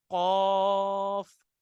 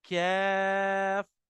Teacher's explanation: जहां से हलक की स्टार्टिंग हो रही है, उस हलक की स्टार्टिंग पर से कॉफ निकालेंगे, और उससे थोड़ा सा पहले के साउंड निकलता है, कैफ